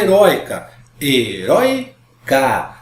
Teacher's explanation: penúltima sílaba tônica formada pelo ditongo OI